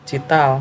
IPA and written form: tʃiːtəl (Chital)